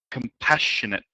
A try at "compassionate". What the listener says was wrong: Good. Don't forget the final T here. Compassionate. Compassionate.